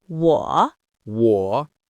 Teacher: 我 is a third tone. It's a dip. You start mid-range, dip down, then come back up.